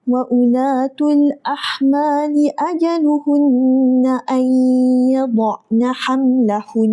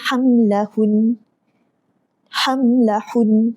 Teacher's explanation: Saya baca panjang dekat nun sabdu tu. Saya baca panjang dua harakat. Sebab apa? Sebab wajibul ghunnah.